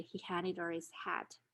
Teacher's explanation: hat if someone is speaking really fast and we know that her and his are unstressed the h sounds may be deleted from these two words · the h sound may be deleted in unstressed syllables in fast speech